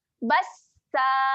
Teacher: Bas, tahan pada huruf sin, kemudian kita bacakan panjang 2 harakat. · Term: mad iwad